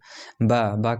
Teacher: है सब बा ब कैसे बोल रहे हैं तो बिना ओठ बिना ओठ बंद कि आप नहीं बोल सकते हैं